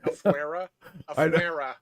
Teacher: You don't roll your R's for afuera. There's no rolling R on afuera.